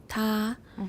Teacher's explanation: shows an aspirated stop with a VOT of about 50 milliseconds